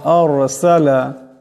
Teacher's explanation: রা সাকিন ডানে জবর আওয়াজটা মোটা করে পড়তে হবে